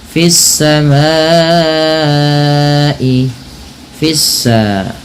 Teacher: Kemudian pada lafal fis samai, fissa, nah di sini ada alif lam, kita kenal dengan namanya alif lam syamsiyah, alif lam syamsiyah yaitu alif lam yang tertulis dan kemudian diidghamkan kepada huruf setelahnya, yaitu huruf sin, sehingga sinnya berharakat tasdid